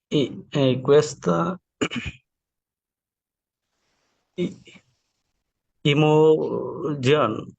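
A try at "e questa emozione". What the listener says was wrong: ই না, এটা হবে এ, এমো, এমো জান্নাজ, এমো সিওনে, আবার এখানে লাস্টে সিওনে আছে, তো সিওনে থাকলে লাস্টে জ্যাটের উচ্চারণ কি হবে, জ্বর উচ্চারণ করবে, এমো সিওনে।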